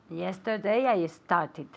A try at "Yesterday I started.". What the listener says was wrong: Very good. Started, okay? Con una sílaba aparte, okay?